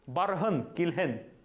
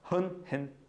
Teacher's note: Ударение падает на аффикс. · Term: Ударение на аффикс